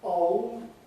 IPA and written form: ɒʊld (old)